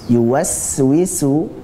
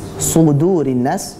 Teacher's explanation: yuwaswisu itu tipis semuanya, sin. Sudurin nas, shad tebal.